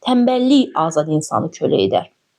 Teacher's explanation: Burda tənbəllikdən sonra a yəni sait gəldiyi üçün tənbəllik sözünün tələffüzündə k y-yə keçdi. Tənbəllik şəklində oldu.